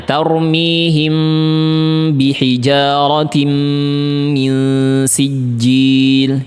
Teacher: Him rapat tapi tidak memberikan tekanan. Kalau memberikan tekanan maka sepakat salah. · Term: Ikhfa syafawi